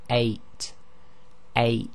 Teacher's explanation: So if you say 8, 8, you'll feel that your bottom of your throat closes very slightly for a very short time, and that's actually called the glottal stop, and in Arabic it's represented by the Hamza.